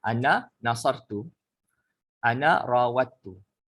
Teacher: Ilmu tajwid iaitu kita memasukkan dal dengan ta. Okey, kerana dia apa panggil makhraj yang hampir. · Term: idgham